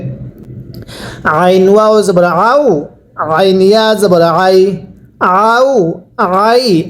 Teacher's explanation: আইনটা উচ্চারণের সময় গলার মধ্যে চাপ দিয়ে পড়বেন